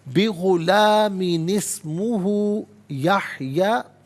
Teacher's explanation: اچھا، بغلام اسمہ نہیں پڑھیں گے، بلکہ غلامی میں میم کے بعد نون ہے، نون قطنی کہا جاتا ہے اسے. ناظرین، تو نون کی نیچے زیر ہوگا اور اسے اسمہ کی سین ساکن کے ساتھ ملائیں گے. درمیان میں سے الف یعنی حمزہ کو حذف کیا جائے گا.